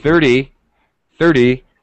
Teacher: it's stretched it's a little longer sound 30 30 e e the second syllable the pitch goes down and it's very fast